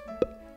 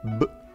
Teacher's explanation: Take for instance p, which is voiceless, and b, voiced.